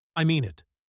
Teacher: I mean it gets firm, falling stress, a clear statement of sincerity